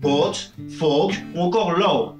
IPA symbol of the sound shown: ɔ: